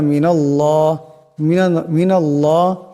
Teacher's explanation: আল্লাহর লামের ডাইনে জবর আসছে আল্লাহর লামকে মোটা আওয়াজে পড়তে হবে